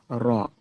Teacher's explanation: রর উপরে জবর আছে, রকে পুর করে পড়তে হয়